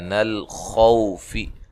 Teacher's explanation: ام یہاں نون تنوین کا ادغام مع الغنہ ہے، نل خوفی، لام کو ہلانا نہیں ہے، خوا کو موٹا ادا کرنا ہے، واو لین ہے